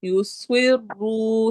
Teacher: سواد کو موٹا اور سٹی والی آواز کے ساتھ. را کو بھی ہیوی پڑھنا ہے، موٹا پڑھنا ہے اور واو مدہ کے ساتھ.